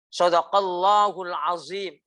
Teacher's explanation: itu membaca dha itu zo